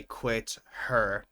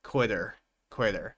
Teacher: We don't necessarily need to say quit her. We can connect the two and say quitter, quitter.